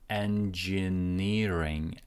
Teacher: primary stress goes on to ni, and then the secondary stress goes on to the first syllable n.